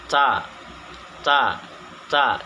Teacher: jadi sedikit mengeluarkan nafas atau seperti berdesis · menyebutkan huruf ta ini dengan sedikit berdesis atau napas berhembus, yang disebut dengan hams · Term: Hames